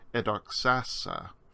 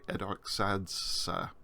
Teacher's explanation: zeta followed by a sigma tense marker will just disappear, and so we end up just with the sigma. And so the aorist, first aorist, is edoxasa instead of trying to say edoxadsa.